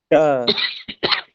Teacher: और यहाँ जो मूर्धा है, मूर्धा का मतलब जब हमारी जिह्वा ऐसे वर्णों का उच्चारण जिनका उच्चारण करते समय पीछे की तरफ मुड़ जाए अर्थात हृदय की तरफ मुड़ जाए, उसी को हम मूर्धा कहते हैं। आप अपनी जिह्वा को मोड़ करके एक बार उच्चारण करिए, ट या ट का उच्चारण जब आप करते हैं तो हमारी जिह्वा जहाँ स्पर्श करती है वही भाग मूर्धा कहलाती है। ट। और जहां से आपने ट का उच्चारण किया वहीं से ही री का भी उच्चारण किया जाएगा।